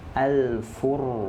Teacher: harusnya untuk kalimat Al-Furqan ini dia dibacanya tebal. Kenapa? Karena ra sukun sebelumnya hurufnya berharokat dhammah.